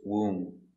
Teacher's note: Example, womb. No b, just womb.